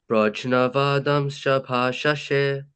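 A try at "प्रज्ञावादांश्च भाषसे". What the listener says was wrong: So for that word, it's gonna be pragya. wouldn't say like the J it would kind of be like a G, like pragya vadamscha bhashashe.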